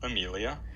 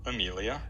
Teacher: And that's a low dash followed by a high percent sign. So you kind of dip down for the phrase accent and then come up a little bit for that final boundary tone. Amelia. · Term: continuation rise